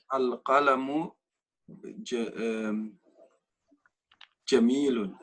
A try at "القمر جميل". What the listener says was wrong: لا, read it again. I thought you said القلم.